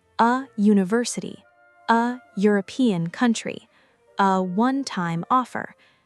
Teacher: they start with consonant sounds when spoken. University begins with a y sound.